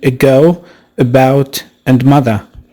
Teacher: this vowel is considered MidCentral and once again MidCentral means that this vowel is in the middle position vertically and horizontally the lips are neutral in shape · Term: schwa sound